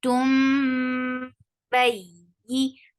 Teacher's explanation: This is iqlab. You're changing the sound of noon into meme. It was actually tun, yeah, tun, but we saw ba after that, so we changed the sound of noon into meme.